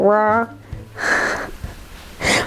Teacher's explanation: It's technically called a molar or a bunched R, but basically you just squish up your tongue in the back of your mouth and go rah